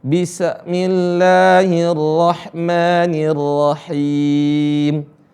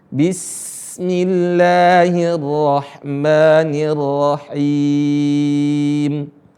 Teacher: Tapi yang tepat adalah suara sin dialirin.